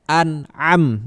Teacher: Jadi jangan kalian a-nya itu jangan keluar dari hidung karena dia huruf hamzah. Bedakan antara huruf hamzah dan ain.